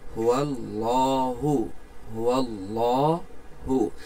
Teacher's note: এখানে লফজাল্লা আমরা পোড় করে পড়তেছি, মোটা করে।